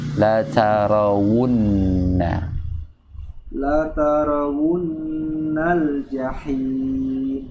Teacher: jadi makhrajnya di dua bibir karena huruf waw, wun, bukannya di tenggorokan bagian bawah